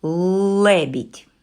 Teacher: Ми чуємо твердий л на початку слова